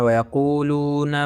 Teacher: وائے آپ نے ہونٹوں کو گول کرنا، قاف کو موٹا کرنا۔